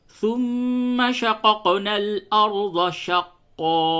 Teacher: پہلے والے قاف پہ قلقلہ نہیں ہوگا، دوسرے والے قاف پہ قلقلہ ہوگا